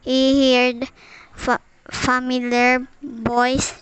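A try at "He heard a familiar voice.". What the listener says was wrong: She omitted a and repeated the syllable fa in familiar twice.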